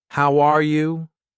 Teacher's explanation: my voice goes up at the end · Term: Intonation